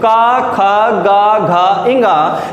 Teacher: इन वर्गों का, का वर्ग का आप अगर उच्चारण करते हो तो का, खा, गा, घा, इंगा, तो यहां से जब भी बोला जाता है तो कौन से स्थान से आपकी आवाज निकलती है, वो होता है कंठ